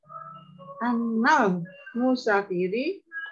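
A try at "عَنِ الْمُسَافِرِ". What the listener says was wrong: Nah, bukan anal. Kalau begitu jadinya anil. Gitu. Jadi kalau ada an ya, kalau an itu kan sukun an.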